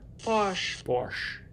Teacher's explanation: The post-alveolar Posh, sh, is basically how we produce it in English. And then if you curl your tongue tip back a little bit, you get the retroflex, or what it's called sublaminal here, post-alveolar.